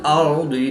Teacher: रा साकिन से पहले हरफ पर ज़बर है तो रा को पुर पढ़ेंगे